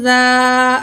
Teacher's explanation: ذال الف زبر ذا، الف سے پہلے زبر ہے، 2 الف کے برابر کھینچ کے پڑھیں گے